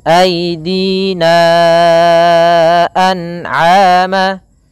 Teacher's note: Untuk panjang mad jaiz munfasil dalam riwayat Imam Hafiz an Asim itu 4 harakat sampai dengan 5 harakat, atau kebanyakan menggunakan yang dia mengambil 4 harakat saja. Maka kita panjangkan aidina an'ama, ya, 4 harakat baru dilepaskan.